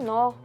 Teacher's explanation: nó é um monossílabo tônico e ele tem o som aberto.